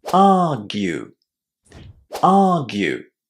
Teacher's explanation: the stress is on the first syllable and then the ending is pronounced as you